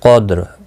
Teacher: لیلۃ، لام ساکن کو ہلالا نہیں، قدر، دال پر قلقلہ بھی ہوگا، قاف مستعلیہ ہے، پر پڑھا جائے گا.